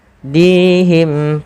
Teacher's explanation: panjangkan dinya 2 harakat karena di sini ada ya kecil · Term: mad tabi'i